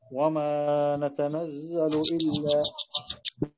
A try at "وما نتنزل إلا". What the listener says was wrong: لا ما في مد وما مد طبيعي وما نتنزل إلا